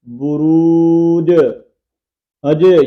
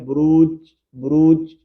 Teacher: یہ جو ہلنے کی آواز آ رہی ہے یہ قلقلے کی ہے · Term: قلقلہ